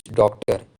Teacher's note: just after uttering the word we gradually rise our pitch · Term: rising intonation